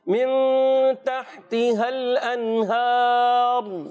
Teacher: اس میں را کو پر رکھیں گے